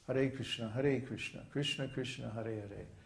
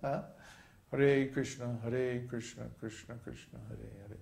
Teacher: We chant it with a flowing rhythm that's derived from the lengths of the Sanskrit syllables. Sanskrit syllables come in two lengths, short and long.